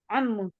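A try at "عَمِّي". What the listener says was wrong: Paman saya, ada ya-nya.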